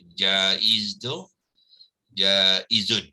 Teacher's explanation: Sifat sofir ya. Jadi bila menyebut jaiz tu sofirkan zai tu ya. So ini adalah mad jaiz munfasil ya, yang mana alif ni perlu dipanjangkan ya, sebab dia akan memanjangkan bunyi huruf nun yang berbaris atas ni kepada 4 ataupun 5 harakat ya.